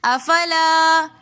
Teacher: افلا کے اندر بھی الف مدہ آ رہا ہے تو اس لیے ہم افلا ایک الف کی مقدار کھینچ کر پڑھیں گے